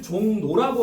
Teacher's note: 리을의 유음이 미음 이응 뒤에서 니은인 비음으로 바뀐대요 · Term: 리을의 비음화